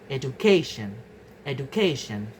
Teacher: So the stress move to the syllable immediately before the suffix tion. · In the words education, the base stress is educate, but in the derived stress becomes education, education. So the stress moves to the syllable immediately before the suffix tion. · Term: stress attracting suffixes, stress-attracting suffixes